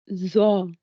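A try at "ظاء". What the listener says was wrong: not za. Your tongue between your teeth. The, the.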